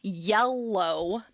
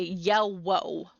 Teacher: liquid gliding which is what happens very commonly when we have the w for r or the w for l so instead of saying yellow they'll say yell woe with a